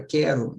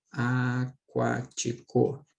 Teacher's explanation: Porque o u não é pronunciado